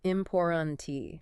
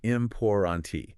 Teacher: The first T in the middle, important tent, that's often that glottal T, that stop in the throat.